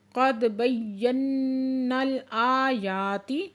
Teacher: کی نشانی ہے، یہاں پہ وقف کرتے ہیں، قد بینا الآیات دال ساکن ہے یہاں پہ کلکلا ہو رہا ہے اور یا مشدد ہے سختی سے پڑھیں گے، نون مشدد ہے